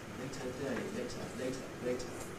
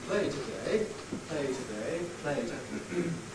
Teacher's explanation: You can hear how the A in later is clipped by the T that's in the same word, whereas in play today, the T is in a different word, so you don't get this clip.